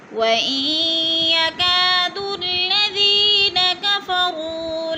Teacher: یا مدہ 2 الف کے برابر، اس کو بھی کھینچ کر پڑھنا ہے 2 حرکات کے برابر · وَإِن، یا کا جو ہے الف مدہ ہے، ادھر الف مدہ کو 2 حرکات کے برابر کھینچ کر پڑھنا ہے · وَإِن يَكَادُ الَّذِينَ كَفَرُوا، وَإِن پہ جو ہے ادغام ہو رہا ہے، نون ساکن کے بعد یا مشدد ہے تو نون کو نہیں پڑھیں گے، پچھلے حمزے کو یا کے ساتھ ملا کر ادغام کریں گے۔